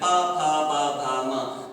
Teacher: और जिस वाद्य यंत्र की अर्थात जिस अंग की सबसे अधिक महत्वपूर्ण भूमिका होती है, उसी अंग के आधार पर हम जान लेते हैं। जैसे प फ ब भ म ध्वनियों का उच्चारण करते समय हमारे दोनों होठ आपस में मिलते हैं। इनकी सबसे अधिक महत्वपूर्ण जो भूमिका है इसमें होठों की है, इसलिए इन ध्वनियों को हम ओष्ठ्य ध्वनियां कहते हैं, अर्थात इनका उच्चारण स्थान हम ओष्ठ मानकर चलते हैं।